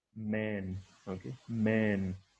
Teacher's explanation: That is why whenever we're producing it, we just join our lips and the air. Okay, it goes through our nasal cavity, so it is produced like this. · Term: voiced bilabial nasal